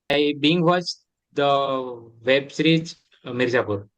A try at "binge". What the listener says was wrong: Not Bing, jaw. The sound should be jaw. I binge watched.